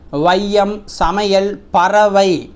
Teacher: வையம் சமையல் பறவை என சொற்களின் முதல் இடை இறுதியாகிய இடங்கள்ல வரும்போது தனக்குரிய இரண்டு மாத்திரை அளவிலிருந்து குறைஞ்சு ஒலிக்குது இவ்வாறு குறைஞ்சு ஒலிச்சா அதுக்கு தான் ஐகாரக் குறுக்கம் அப்படின்னு பேரு குறைந்து ஒலிக்கும் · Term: ஐகார குறுக்கம்